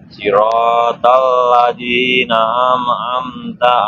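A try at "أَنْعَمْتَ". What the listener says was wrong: Bukan an'amta itu. An'amta. Kebalik. An'amta. An-nya duluan.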